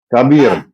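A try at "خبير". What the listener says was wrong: Khabir. Oh iya, bukan kabir, Pak. Nggak pakai H. Kalau kabir yang biasa. Khabir itu.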